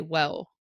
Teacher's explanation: Mandarin speakers will change that to a W sound and they'll say “wew”.